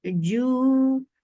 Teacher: jim should not have ch sound into it. It is very sharp letter.